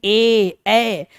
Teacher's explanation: कंठ और तालू मिलाकर दो अंगों को मिलाकर हम लोग क्या करते हैं उसका उच्चारण करते हैं